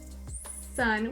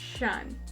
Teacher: this person or student has moved their tongue tip too far back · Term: palatal lisp